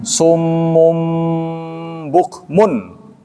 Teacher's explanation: Yang pertama karena nun mati bertemu dengan ba. Ya, menjadi qalab.